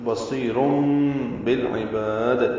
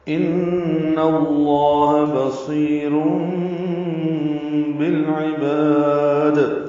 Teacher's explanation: تو بصیر بالعباد، لام ساکن پہ اظہار قمری، عین وسط حلق سے ادا کریں گے، با کو لمبا کریں گے.